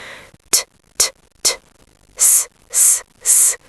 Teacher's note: There's no buzzing at all. It just feels like air is escaping from my mouth. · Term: unvoiced consonant sounds